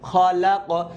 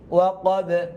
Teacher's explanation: কলকলা হরফ, আওয়াজ রিপিট হবে কারণ থেমে গিয়েছি